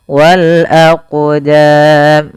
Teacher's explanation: cara membacanya yaitu kita memantulkan huruf qnya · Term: huruf Qalqalah